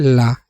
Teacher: पार्श्विक वर्ण में मुख्य द्वार बीच में बंद हो जाता है और हवा दोनों ओर से निकल जाती है